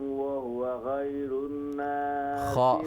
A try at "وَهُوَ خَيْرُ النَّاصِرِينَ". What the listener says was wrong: خا کو درست کیجیے، وَهُوَ خَيْرُ النَّاصِرِينَ۔ غین خیر